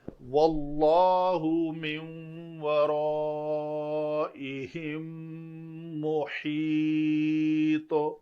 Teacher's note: واللہ، واو کے لیے عربی تجوید کے مطابق شفتین گول، شفتین کی گلائی یہ ہے آگے لام اس میں جلالہ کا ہے، اس میں جلالہ کے لام سے پہلے زبر ہو تو اس کو پر کرنا ہے، تو یہ واللہ نہیں ہوگا بلکہ یہ پڑھا جائے گا واللہ من ورائہم محیط۔